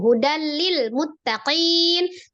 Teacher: tanwin ketemu dengan huruf lam idgham bila ghunah idgham bila ghunah idgham ditasdidkan ke lam hudal tapi tidak disertai dengan dengung · Idgham ditasdidkan ke lam hudal. Tapi tidak disertai dengan dengung. Langsung hudal lil muttaqin. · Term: Idgham bila gunnah